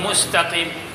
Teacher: سین باریک حروف میں سے ہے لیکن ساتھ سیٹی کی سی آواز میں نکلے گی. سیٹی کی سی آواز نکلنے والے حروف 3 ہیں، جس میں سیٹی کی سی آواز نکلتی ہے پتلی، سین میں سب سے زیادہ ہوتی ہے، زا میں اس سے کم ہوتی ہے، صاد میں اس سے کم ہوتی ہے.